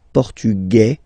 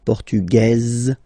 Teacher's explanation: it will be only in this z sound the difference between the masculine form and The Feminine form okay masculine portug you don't pronounce the S feminine form portuges · Masculine, portugais, you don't pronounce the S. Feminine form, portugaise, you pronounce this z sound, okay?